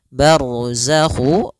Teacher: ro tebal karena ada huruf ro yang sukun didahului dengan fathah